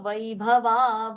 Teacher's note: Vaibhava, the Bha is a Mahaprana